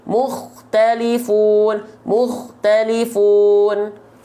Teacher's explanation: Kho sukun didahului oleh huruf berharokat dhammah, maka dia juga dibaca tebal.